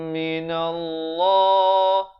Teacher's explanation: lafzul jalalah dibaca tebal dua harakat.